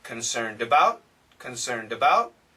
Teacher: listen carefully and you will hear the D connects